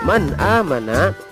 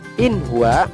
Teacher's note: mengucapkan huruf nun sukun atau tanwin dengan jelas tanpa mendengung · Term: izhar khalqi